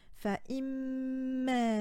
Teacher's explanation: Puis vous avez la lettre mim surmontée d'une shadda avec un fatha et une prolongation. Donc on doit insister sur la lettre mim, et pour insister sur la lettre mim, il faut s'appuyer sur la lettre précédente, ce qui nous donne fa'imma.